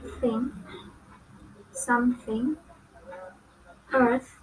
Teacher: Next is English consonant Th. It belongs to interdental and fricative. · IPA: /ɵ/